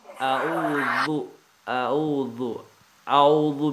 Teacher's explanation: ذال زبان کی نوک جو ہے نا اس کو یہاں دانتوں کے ساتھ ملائیں گے